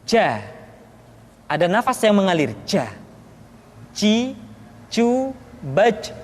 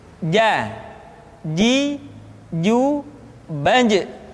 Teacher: Padahal kalau kita melihat sifat yang dimiliki huruf ja, dia tidak boleh mengalir nafas karena sifatnya al-jahr, lawan dari al-hamas.